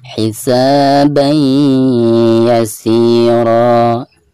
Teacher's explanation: Di sini huruf ya ya, dan termasuk idgham biguna. Maka cara membaca tanwin yang ada di atas ba tersebut itu harus dimasukkan langsung ke huruf ya disertai dengan guna.